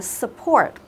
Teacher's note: trọng âm của từ này sẽ Nhấn vào âm tiết thứ 2